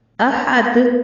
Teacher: दाल चूंकि हुरूफ कलकला में से है तो जब ये साकिन होगा फिर हम इसको थोड़ी सी हरकत देकर वक्फ करेंगे। अहद नहीं कहेंगे बल्कि अहद।